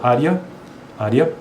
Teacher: por mais que seja um e né e a na verdade na pronúncia é i